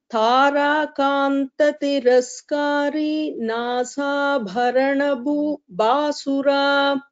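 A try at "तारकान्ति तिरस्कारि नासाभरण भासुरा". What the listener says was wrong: Thara Kanti Tiraskari Nasabharanabhasura. All this Kanti ti is Hasvasvara, it is not Dirgha. Same, Tiraskari is not there, Tiraskari. So, Tara Kanti Tiraskari Nasa Bharana Bhasura.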